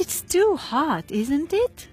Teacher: you heard that my tone of voice rose in the end of the question tag.